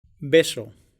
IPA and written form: ˈbe.so (beso)